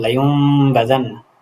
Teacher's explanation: নুনে সাকিন অথবা তানবিনকে মিম দ্বারা পরিবর্তন করতে হবে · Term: ইকলাব